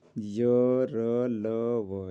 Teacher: अंतस्थ व्यंजन वे व्यंजन जिनका उच्चारण जीभ, तालु, दांत और ओठों के परस्पर सटाने से होता है।